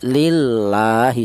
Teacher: Kalau yang ini langsung lam jalalah ya. La ini lam jalalah yang didahului huruf yang berharakat kasrah dibaca tarkik atau tipis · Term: tarqiq